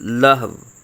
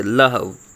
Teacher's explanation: دو پیشیں آ گئیں تو وقف میں لہو، واو ساکن کر دیں گے